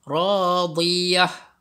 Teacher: Dia gantikan ta marbutah ini dengan huruf ha.